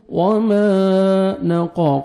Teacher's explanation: دیکھیں، الف مدہ 1 سیکنڈ میم کو کھینچنا ہے، وما نقا، قاف کو موٹا کر کے پڑھیں گے